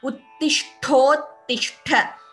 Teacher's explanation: This entire word will be chanted together. And Tha is Mahaprana in both the places.